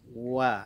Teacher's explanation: makhraj huruf wawu itu monyongkan bibir dulu, baru kita senyumkan